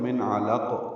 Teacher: ایک زیر پڑھیں گے اور نون قطنی پڑھیں گے اور قاف سے ملائیں گے. ہم نے وقف کیا تو من علق، قاف پہ قلقلہ کیا